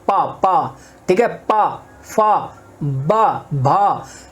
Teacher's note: हमारी जीभ कहीं नहीं टकरा रही है, हमारा सिर्फ होठ आपस में टकरा रहे हैं। इसमें होठों का कमाल है, सारा जो उच्चारण हो रहा है हमारा होठों से हो रहा है। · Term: ओष्ठ